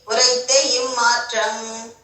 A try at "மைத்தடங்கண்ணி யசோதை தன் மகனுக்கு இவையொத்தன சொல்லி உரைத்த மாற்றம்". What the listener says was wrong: உரைத்த இம்மாற்றம் இல்ல, உரைத்த மாற்றம் இம்மாற்றம் இருக்கா, அது இருந்து அடிச்சுது.